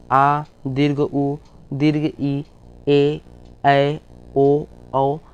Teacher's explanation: इनके उच्चारण में दुगना समय लगता है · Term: दीर्घ स्वर